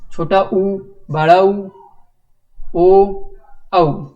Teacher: इनको अगर आप उच्चारण करेंगे और अपने मुख की तरफ ध्यान देंगे तो आपका जो मुख है वो गोलाकार रूप धारण करता है, यानी कि वृत्ताकार हो जाता है। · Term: वृत्ताकार स्वर